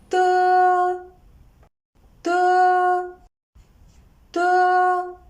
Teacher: De is an unaspirated voiceless alveolar plosive. When we pronounce it, the tip of the tongue and the upper alveolar ridge form a closure.